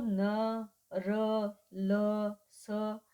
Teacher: इसके उच्चारण में जीभ की जो नोक है वह किसको स्पर्श करती है वर्त को स्पर्श करती है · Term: वर्त ध्वनियां